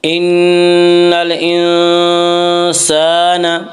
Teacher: الف مدہ کو 1 الف کے برابر کھینچ کر پڑھیں گے